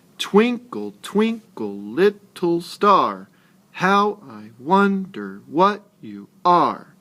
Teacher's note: The unstressed syllables where your voice went down and the stressed syllables where your voice went up. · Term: stressed and unstressed syllables